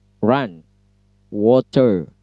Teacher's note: Kemudian R, kalau R dalam bahasa Inggris itu, kalau untuk British style itu silent R optional, dianjurkan tidak dibaca kalau dalam British. Kalau dalam American style justru wajib dibaca R-nya. Tetapi R-nya tidak seperti R bahasa Indonesia, lidah tekuk ke atas, kemudian ucapkan R.